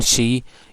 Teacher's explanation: And then she is palato-alveolar because your front part of the tongue, uh, or your in other sometimes your blade of the tongue is touching at the palate and at the alveolar as well